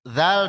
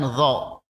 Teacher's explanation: yang paling menonjol di sini misalnya zal itu tipis, dho itu tebal.